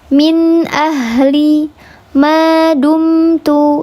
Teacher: ada suara yang masuk ke hidung, maka ada gunnahnya tapi tingkatannya yang kurang sempurna